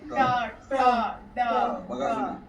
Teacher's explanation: ટ ઠ ઉપર અડવું છે. ટ ઠ ડ ન આપણું તાળવું ઉપર અડે એટલે એને મૂર્ધન્ય.